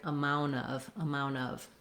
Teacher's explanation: there's no T whatsoever in the most common way · I don't have to stop the air, and my N might be a little longer. I'm not going to hold it a long time, amount of.